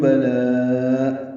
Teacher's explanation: بلا میں لا الف مدہ کے بعد حمزہ آنے کی وجہ سے مد متصل ہے، ہم ساری مد متصل کو 4 حرکات سے زیادہ لمبا کریں گے، 5 حرکات یا 6 حرکات۔